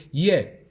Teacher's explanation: It is produced when the tongue approaches the hard palate. Approaches means comes close to, قريب, near the hard palate. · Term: palatal